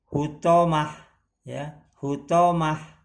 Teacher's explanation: Maka cara membaca disukunkan dan berubah menjadi ha, ya menjadi ha, ya marbutoh ini jadi menjadi ha nih ya, jadi bukan hutomati ta marbutoh tapi dia jadi berubah jadi hutomah, ya hutomah, ya menjadi ha, ini menjadi ha, hutomah.